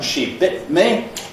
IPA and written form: ʃi ˈbɪʔt mi (She bit me)